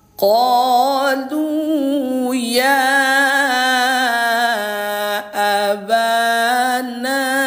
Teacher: Maka hukumnya mad jaiz munfasil. Panjangnya ayah bunda adalah empat. Empat ketukan atau empat harakat.